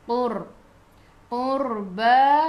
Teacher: Qur, qa qiqu tebal. Sebelum ra ada baris depan, kena baca ra tu tebal, lidah naik ke atas. Qur, qurba, ba dua harakat ada alif kecil mad asli.